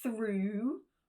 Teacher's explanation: Next is an /u:/ sound, a nice long vowel.